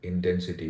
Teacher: Someone with a clear Indian accent or Indian pronunciation would say intensity, with uniform stress on all the syllables or all the parts of the word.